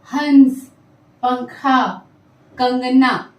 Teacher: नासिका यानी हमारे नाक से श्वास बाहर जाती।